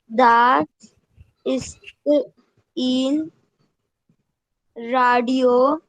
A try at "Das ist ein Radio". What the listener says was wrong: नहीं, बस बस, das ist ein, in नहीं, ein.